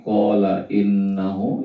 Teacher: Hu-nya innahu itu mad sillah qasirah ya, cuma dibaca 2 harokat saja.